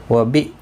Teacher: حمزہ ساکن کو جھٹکی کے ساتھ ادا کیا جائے گا